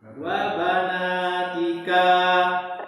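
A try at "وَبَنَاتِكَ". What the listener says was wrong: Kafnya nggak panjang. Wabanatika. Nah, sahih.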